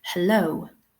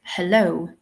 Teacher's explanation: Very strong emphasis on the second syllable. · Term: syllable stress